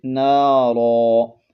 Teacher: وقف کی حالت میں 2 زبر والی تنوین کو الف سے بدل دیتے ہیں ، نارن سے نارا، اور اگر آپ یہاں پر وقف نہیں